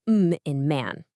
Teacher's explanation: the humming nasals where air actually comes out of your nose